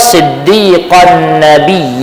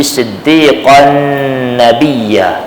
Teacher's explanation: jadi tanwin diidamkan ke Nun musyaddadah yang berikutnya selepas daripada tanwin